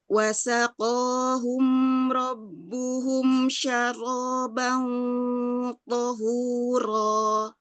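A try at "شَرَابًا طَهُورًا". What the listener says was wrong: Ya, tohuro, tohnya tebal, orangnya juga tebal. Tohuro. Tohuro, hu-nya biasa, hu, ya tipis ya, enggak tohuro, jangan ngikut tebal. Tohuro.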